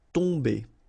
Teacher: You don't pronounce the M at all, so it's really a nasal, so it goes in your nose.